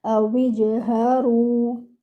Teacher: Ha should be given 1 count. Your Ra should be given 2 counts and it should be heavy.